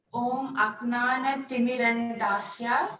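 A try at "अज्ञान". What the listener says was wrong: You know it's J, but you spell with a G. G-Y. A-G-Y. You spell, pronounce with A-G-Y. Agyana.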